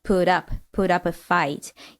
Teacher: we have a t sound is the end of put uh which is followed by the vowel and that turns the T sound into a flap T